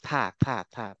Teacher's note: আচ্ছা, কিন্তু এটার সময় বাতাস বের হয়ে যাবে, কোনো মাথা গলা ঘর ঘর করবে না, শুধু থা, থা, থা বের হয়ে যাবে।